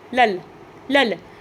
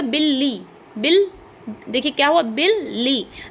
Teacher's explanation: हमारे द्वित व्यंजन हो गए। क्योंकि दो सेम व्यंजन मिलकर के मिल गए हैं आपस में।